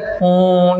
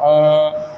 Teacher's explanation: दीर्घ स्वर से भी अधिक समय लगता है इनके उच्चारण में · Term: प्लुत